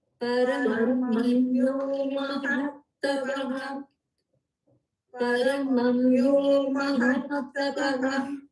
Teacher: There is a slight pause after mahat.